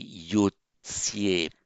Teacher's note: It's written without the intervening I, and so it's yud sie. By internal sandhi, the d before the s becomes a t, so that accounts for the yotsie.